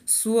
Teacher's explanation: तो आधा अक्षर पूरे अक्षर में जाकर मिल जाता है यानी स की ध्वनि कम सुनाई पड़ेगी लेकिन व की ध्वनि ज्यादा सुनाई पड़ेगी